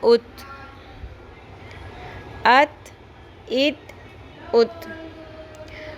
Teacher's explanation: تا جب ساکن ہوتا ہے تو ہلکی سی ہ کی آواز آتی ہے، لیکن اس کو اتنا کلیئر نہیں ہو جانا چاہیے کہ اس کو ہم ات پڑھنے کی بجائے اتھ ہی پڑھنا شروع کر دیں۔ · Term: قلقلہ